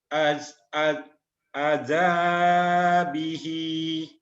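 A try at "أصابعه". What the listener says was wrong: A-nya panjang. Asabi'ihi. Asabi'ihi.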